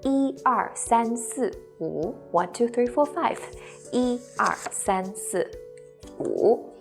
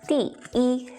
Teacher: When 一 is used as a numeral in sequence, such as when you're counting, it is the first flat tone.